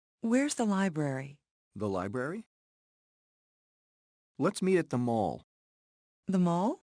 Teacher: rising intonation to confirm information